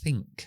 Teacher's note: Hasta que no llegamos a la I, no activo la voz. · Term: la sorda